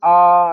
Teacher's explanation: तो आ के अंदर क्या होता है, सबसे ज्यादा मुंह खुलता है। डॉक्टर कहता है ना कि मुंह खोले और बोलो कि आ, तो ये जो आ होता है ना, वो कैसा हो गया, विवर्त।